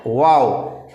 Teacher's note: दोनों होठों की गोलाई से वाव अदा करते हैं · वाव बोलने के लिए आपको दांत को टच करना ही नहीं है, ठीक है, सिर्फ मुंह गोल होगा